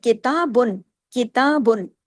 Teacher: با دو پیش بن، ہم نے پورا اظہار کیا، کیوں؟ آگے حمزہ الف ہے۔